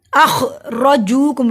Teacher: रॉ को मोटा पड़ा, रॉ के ऊपर जबर है। रॉ को इस तरह से पढ़ा जाता है जैसे ज़बान वाइब्रेट करती है, र की आवाज़ आनी चाहिए।